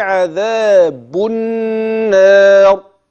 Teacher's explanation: كلمه النار لام معايا هنا مدغمه في النون